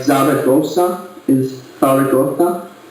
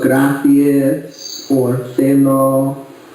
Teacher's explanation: So you always do a theta on all the Z's.